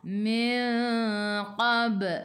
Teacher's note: Qab qalqalah sughra, lantunannya kecil. Ba ada baris sukun di tengah-tengah ayat.